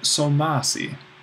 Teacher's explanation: t plus or tall plus a sigma well in this case the dental drops out and we just keep that Sigma that sibilant